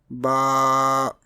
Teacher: Ba is pronounced from the wet part of both lips.